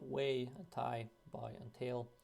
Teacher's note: vowel starts in a more open position and it goes to a more close position